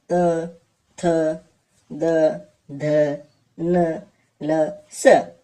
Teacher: म्हणजे काय वर्णाचा उच्चार करताना वर्णाचा उच्चार करताना दाताला स्पर्श म्हणजे जिभेचे टोक वरच्या दातांच्या मागच्या बाजूस टेकते त्यांना दंत्यवर्ण असे म्हणतात